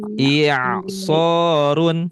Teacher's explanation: Hamzahnya dibaca kasroh kemudian masuk ke ain.